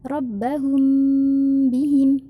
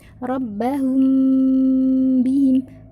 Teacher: mim sukun ketemu dengan huruf ba harokat kasroh. Bacanya didengungkan ya, bukan rabbahum bihim. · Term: ifa syafawi